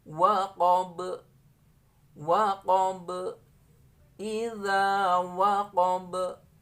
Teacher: nanti kalau dibaca waqaf, ba ini memiliki sifat qalqalah. Jadi membacanya waqab, waqab, idza waqab.